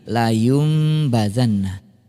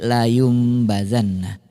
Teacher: bunyi nun sukun atau tanwin yang tadinya bunyinya An In Un itu berubah menjadi am em Um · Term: iqlab